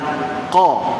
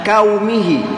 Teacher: Qaf, di mana qaf ialah pangkal lidah, makhraj adalah pangkal lidah, terangkat pangkal lidah. Qa, terbuka mulut.